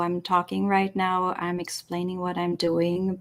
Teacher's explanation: there's not much inflection in my voice but i keep a steady tone with it that is considered a monotone voice and what it does it's